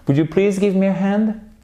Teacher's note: Là, on est sur la question. L'intonation, elle remonte.